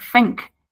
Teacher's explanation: The initial th sound is replaced with F.